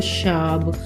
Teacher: वो स को श का उच्चारण करते हैं